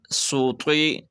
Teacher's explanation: یہاں پہ سین سیٹی والا حرف ہے اور طوا حروف مستعلیہ ہے۔ یہ حروف قلقلہ میں بھی شامل ہے، لیکن قلقلہ تب ہوتا ہے جب ساکن ہو، تو یہ اس کے نیچے زیر ہے تو اس پر قلقلہ نہیں ہوگا۔